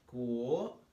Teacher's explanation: as a second tone, starts mid-range and goes up